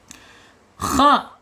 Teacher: Makhraj k ini ada tenggorokan atas ya. Harus tebal harus ditebalkan.